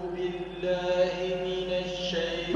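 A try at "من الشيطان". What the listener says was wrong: لا مش من الش من الشين ما هيش شديده تفشي فيها انتشارها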